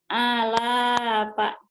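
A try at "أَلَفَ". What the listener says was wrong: A-nya panjang, Bu. La-nya panjang, Bu. Pa-nya pendek.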